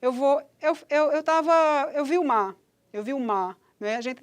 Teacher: a gente produz quase um r apagado